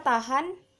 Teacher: bunyi H mati, oral, laringal, frikatif